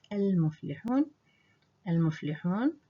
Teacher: the Hamza will become silent in the reading process